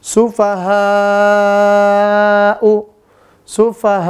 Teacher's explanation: Panjangnya jangan lupa 4 sampai 5 harokat